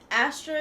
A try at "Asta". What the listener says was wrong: kid's name's Asta, not Astra. No, the character's name's Asta. A-S-T-A.